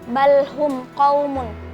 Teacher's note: Hukumnya idhar syafawi karena ada mim sukun bertemu dengan huruf qaf, dibaca jelas